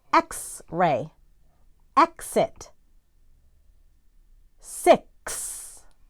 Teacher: producing a k and an s sound together